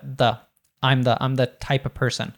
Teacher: usually we'll reduce the to thuh